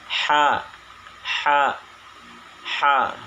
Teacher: Jadi harus mengeluarkan sedikit nafas untuk menyebutkan atau menyempurnakan penyebutan huruf ha. Dan lunak dan suaranya tidak tertahan, lepas aja gitu. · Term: nafas berhembus